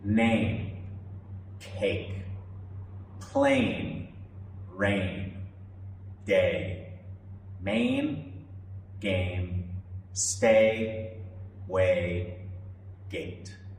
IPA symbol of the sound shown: eɪ